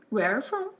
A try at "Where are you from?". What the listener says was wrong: você está falando tão rápido que não está separando o suficiente. Não, where are from? Where are you?